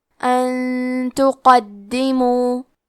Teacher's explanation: کلمت ان کے آخری میں نون ساکن ہے، پھر حرف تا آتا ہے کلمت تقدمو، تا حروف الاخفاء میں سے ہے، تو ہم یہ حکم کو غنہ کے ساتھ ادا کریں گے۔ ان تقدمو، کلمت تقدمو میں حرف القاف کو موٹی آواز میں پڑھنا ہے۔ دال پہ تشدید ہے تو ہم 2 حرف کے برابر دال کو پڑھیں گے، اور کیونکہ تشدید زیر کا ہے تو ہمیں زیر کو ظاہر کرنا ہے۔